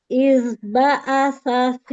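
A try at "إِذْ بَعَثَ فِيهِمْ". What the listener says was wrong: Huruf ain buka. Ba'a. Alirkan zalnya, jangan buru-buru. Iz ba'atsa fihim.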